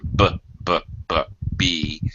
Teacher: you can feel the vibration your vocal cords are working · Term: voice sounds